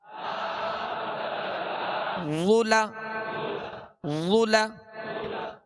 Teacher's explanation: वा पेश वु, लाम जबर ला, जुला जुला। ला को नरमी से पढ़ेंगे और पुर पढ़ेंगे, मोटा पढ़ेंगे हरूफ मुस्तालिया में से, मगर नरमी जुला नहीं पढ़ेंगे, इसमें सख्ती की आवाज ना हो, यानी ला जा ना बन जाए।